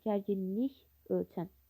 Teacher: Gərginlik ölçən sözündə olan iki L samitin biri N kimi tələffüz olunur. Biri isə olduğu kimi qalır.